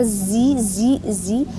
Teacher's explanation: ujung lidah hampir ketemu dengan Gigi depan bagian bawah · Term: huruf Za